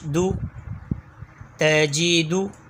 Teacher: دال کا مخرج زبان کی نوک اور اوپر کے دانتوں کی جڑ سے دال ادا ہوتا ہے۔ جس مخرج سے تا ادا ہوتا ہے وہی مخرج دال کا بھی ہے۔